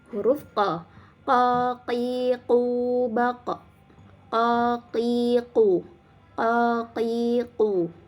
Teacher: pangkal lidahnya ini bertemu dengan langit-langit yang berdaging